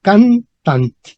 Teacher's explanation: La fuerza estaría en can.